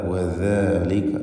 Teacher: വദാലിക, ദാല് വ്യക്തമായി മഖ്റജിൽ നിന്ന് ഉച്ചരിക്കാൻ ശ്രദ്ധിക്കേണ്ടതാണ്. നാവിൻ്റെ അറ്റത്തിൻ്റെ മുകൾ ഭാഗം മേലെ പല്ലിൻ്റെ മുൻപല്ലിൻ്റെ അറ്റവുമാണല്ലോ അതിൻ്റെ മഖ്റജ്. വദാലിക ലൂസാക്കി ഉച്ചരിക്കണം, റഖാവത്തിൻ്റെ ഹർഫാണ്.